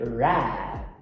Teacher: E rato é com a retroflexa.